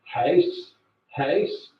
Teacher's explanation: the most distinctive feature of Northern Irish English is the diphthong ow, as in how